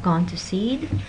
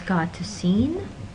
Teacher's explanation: it comes out as God to seen what's happening is that the final consonants of the first and third words were reversed · So, for example, when you have the unintended utterance of gone to seed, and it comes out as got to seen, what's happening is that the final consonants of the first and third words were reversed, right? And notice that the reversal of the consonants also changed the nasality of the vowels. So when you, instead of gone, when you say God, the nasality disappears.